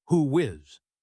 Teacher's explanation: How about "So, who is in your group?" Look at who is. Who ends with the /U:/ sound. Is begins with /I/. This is a perfect spot for a /W/bridge. We say who whiz.